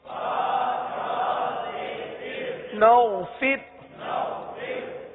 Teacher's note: فر کی را کو باریک پڑھیں گے